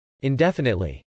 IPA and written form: ˌɪndˈɛfənətli (indefinitely)